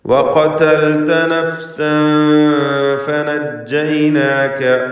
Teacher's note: ഖാഫിന് തഫ്ഖീം കൊടുക്കുക, ഇസ്തിഅലാന്റെ ഹർഫാണ്.